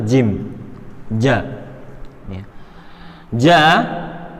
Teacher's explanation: sama B gym Antum bisa baca sendiri ya cara pengucapannya yaitu lidah bagian tengah pada posisi langit-langit bagian atas itu gym ja ja dan untuk perhatikan Ja ini bukan kita